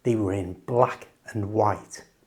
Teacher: In fast natural English, native speakers will usually change the and in expressions like black and white by not pronouncing the d at all. And then we change the a to awah sound.